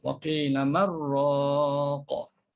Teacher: Terus masukkan nun dalam huruf ra. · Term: idgham